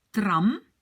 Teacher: le A est court, l'accent est dessus